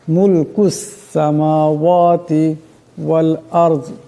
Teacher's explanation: এখানে রাস সাকিন, রাস সাকিনের ডাইনে জবর আছে, রাকে মোটা আওয়াজে পড়তে হবে।